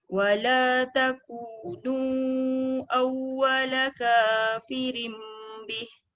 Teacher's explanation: Wala takunu tu panjang. Mesti lebih daripada 2 harakat. Iaitu 4 paling panjang.